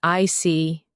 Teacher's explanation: When you show understanding with I see, your tone drops slightly to show calmness.